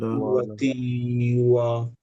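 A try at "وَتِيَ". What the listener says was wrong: না, তিউ, তিতে মাদ নাই কিন্তু, রাইট? তি লম্বা না, তিউ, ওয়াতে মাদ, সরি ওয়াতে মদ না। সো তিউ ওয়ালা, তিউ ওয়ালা।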